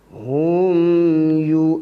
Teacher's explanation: Mim mati dengan ya, jangan dengung. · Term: izhar syafawi